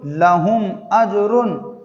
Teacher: اس مثال میں بھی میم ساکن کے بعد با اور میم کے علاوہ والا حرف حمزہ آیا ہے، تو اس لیے یہاں پر میم کو ظاہر کر کے پڑھیں گے